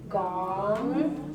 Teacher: So it's a high rising tone.